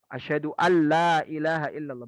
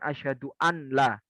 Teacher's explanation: suara huruf nunnya dianggap tidak ada. Langsung dibaca huruf lam dan ro-nya dengan menggunakan tasydidnya serta wajib tanpa menyisakan gunnah sedikit pun saat membacanya. Asyhadu alla ilaha illallah, bukan asyhadu an la, tapi asyhadu alla ilaha illallah. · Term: Tanpa menggunakan gunnah